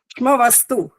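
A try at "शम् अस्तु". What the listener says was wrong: नहीं, श्म नहीं है ये। श आधा है, पहले बताओ। श आधा है। मैं पूछ रहा हूँ, श्म तब बोलेंगे जब श आधा हो। श पूरा है, म आधा है।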